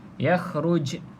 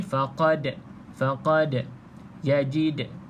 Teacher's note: Dalam keadaan sukun ataupun mati macam ni, huruf jim mati, huruf dal mati, apa lagi? Huruf jim mati, dal mati, kena lantunkan. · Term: qalqalah